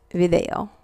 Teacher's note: it's pronounced sort of in between a b and a v